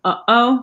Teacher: they have like a glottal stop like in the between uh oh